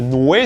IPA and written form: nwe (nue-)